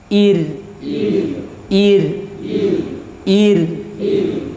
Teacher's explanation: yang sukun sebelum nya kasrah dibaca tipis